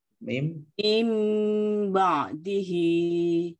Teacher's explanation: Jadi suara nunnya diganti menjadi suara mim. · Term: Iklab